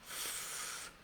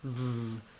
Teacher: It's actually similar to the word force, we just add voicing. So rather than force, vorse. · start with the F sound, f, then add your voice, v